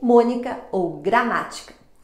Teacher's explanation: proparoxítona, a sílaba tônica está na antepenúltima sílaba, como mônica ou gramática.